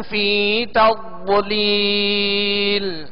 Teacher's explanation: ضاد کو پر پڑھیں گے، ضاد کو موٹا کر کے پڑھیں گے اور اس میں قلقلہ بھی نہ ہو اور یہ باریک بھی نہ پڑھا جائے. ضاد کو پر یعنی موٹا پڑھیں گے حروف مستعلیہ میں سے.